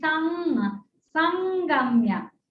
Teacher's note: So when before ga, it will change to varga panchama of the ga.